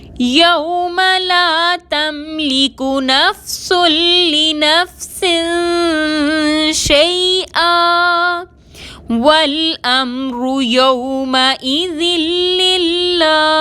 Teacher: للہ میں اللہ سے پہلے لام کے نیچے زیر ہے، اللہ کا لام باریک پڑھیں گے